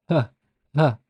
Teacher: it's uh it's a bit down here so the pharyngeal frigative it is produced at the base of the tongue with the base of the tongue near the back of the pharynx the throat and the throat muscles are strongly constricted · it's a voiceless so no vocal cord vibration and it's pharyngeal it comes from the pharynx the same place where happens if you say huh you notice